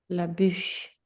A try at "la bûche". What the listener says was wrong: La bûche. Donc, ici, comment est-ce qu'on fait le U? U, c'est pas OU. C'est un son différent. Donc, quand on fait le U, la bouche est plus petite. C'est U. U.